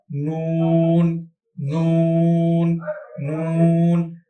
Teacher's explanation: নুন হরফ উচ্চারণ করার সময় নাকে যাবে এবং ঠোঁট গোল হবে